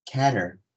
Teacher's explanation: 이 두 개 모두 발음이 똑같아요. 왜냐하면은 여기 T 사운드가 삭제되기 때문입니다. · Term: T deletion